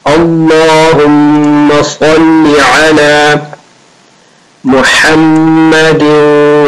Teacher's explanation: The name of Allah and Sa'd, both are thick.